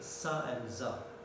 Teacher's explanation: When we pronounce sa and za, the front of the tongue only goes towards the teeth ridge. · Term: alveolar fricative